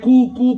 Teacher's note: कू को बगैर खींचे पड़े, लेकिन ये काफ बारीक है डंडे वाला, इसको बारीक ही अदा करे, मोटा करने की कोशिश बिल्कुल भी ना करे। लफ्ज के मखारिज चेंज हो जाएंगे, इसी का नाम तजवीद है।